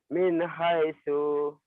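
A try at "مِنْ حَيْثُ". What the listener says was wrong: Salah. salah min haitsu gitu ya. Min haitsu nggak ada yang panjang.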